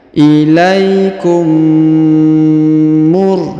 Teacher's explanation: huruf mim berharokat sukun bertemu dengan mim bertasdid, maka ini ditahan dan ditekan, didengungkan 2-3 harokat ya. Huruf mim sukunnya menghilang langsung melebur ke sini.